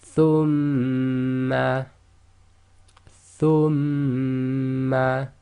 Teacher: So you keep your lips closed and vibrate the sound or hum the sound in your nose. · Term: nasalization